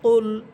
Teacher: কুল এটা জিহ্বার গোড়া উপরে তালুর সাথে লাগবে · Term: কফ